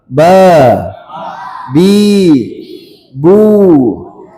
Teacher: Ba keluarnya di bibir, bertemu antara bibir atas dan bawah. Iya. Bertemu bibir atas dan bawah.